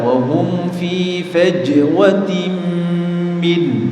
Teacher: di huruf jim sukun juga ada qalqalah